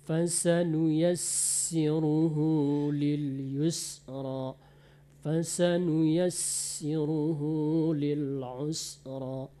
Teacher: Kemudian sin kalau bertasdid dia diperbanyak anginnya.